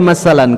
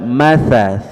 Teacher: ujung lidah kita bertemu dengan gigi seri atas